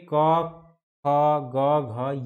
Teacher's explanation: क वर्ग में क ख ग घ ये सभी जो वर्ण हैं, इसका उच्चारण स्थान जो है वह कंठ है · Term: कंठ ध्वनि